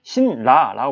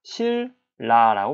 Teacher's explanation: 니은이 리을로 비음이 유음으로 바뀌었죠